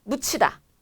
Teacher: 디귿과 히읗이 만나서 치읒이 되는 거죠.